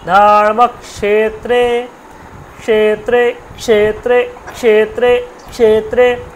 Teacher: জিহ্বাটাকে ভাঁজ করে উপর দিকে নিয়ে উচ্চারণটা করতে হবে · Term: মূর্ধার স